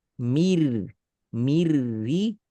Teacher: harus mir, jangan mir, nggak boleh ada ke hidung. Itu namanya lebur sempurna karena tidak tersisa lagi sifat dan makhraj huruf nun, alias nun langsung berubah total.